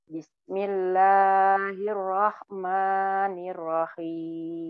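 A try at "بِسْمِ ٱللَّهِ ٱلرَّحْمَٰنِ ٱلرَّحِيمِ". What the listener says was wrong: Bismillahnya Bu, kepanjangan dulu. Bismillahirrahmanirrahim. Dua harokat. Bismillahirrahmanirrahim. Lanya kepanjangan. Lanya kepanjangan. Ya, lanya kepanjangan. Itu yang masih yang bismillahnya kepanjangan, ma-nya juga kepanjangan. Jadi dua harokat itu satu ayunan semua, Bu. Bismillahirrahmanirrahim.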